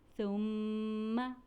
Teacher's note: یہاں نون مشدد کا بھائی میم مشدد موجود ہے اس لیے ہم اسے بھی غنہ کر کے پڑھیں گے